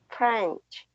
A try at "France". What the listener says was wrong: France, with an S at the end. France.